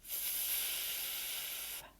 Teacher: teeth on the back of our bottom lip again. F, but there's no vibration. F is F. And double F.